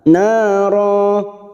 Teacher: Ro fathah tanwin yang dibaca waqaf. Mad iwad 2 harakat kita panjangkan, tidak boleh lebih, tidak boleh kurang